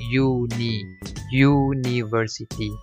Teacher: Okey, perkataan university walaupun dieja bermula dengan perkataan huruf U, huruf vowels. Tetapi apabila kita sebut, seolah-olah di depan U tu ada huruf Y, membuatkan kita sebut sebagai university